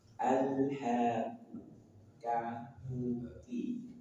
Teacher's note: Kemudian kaf dari pangkal lidah, lebih ke depan dari makhraj huruf qaf.